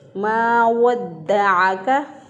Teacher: मा वद्दअका, दाल को मजबूती और क़ुव्वत से अदा किया, वाव की अदायगी में होंठों को थोड़ा सा गोल करके वाव को अदा किया, दाल के परशाद मजबूती और क़ुव्वत से अदा किया, आइन जो है इसको वस्ते हलक से अदा किया, और काफ जो है इसको नरमी से पढ़ेंगे, मोटा नहीं पढ़ेंगे।